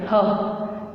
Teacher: ह का जो उच्चारण करते हैं तो वो कहाँ से उच्चारित होता है? हमारे कांकल्य से। कहाँ से? हमारी वोकल कार्ड या कांकल्य से।